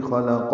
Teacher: وقفاً تو یہ ساکن ہو جائے گی خلقہ اور اس پہ ہمس ہوگا